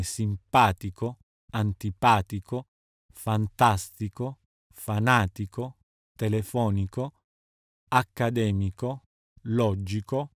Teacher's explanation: in tico tico come simpatico antipatico fantastico fanatico telefonico accademico logico vengono anche accentati sulla terzultima sillaba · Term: sdrucciole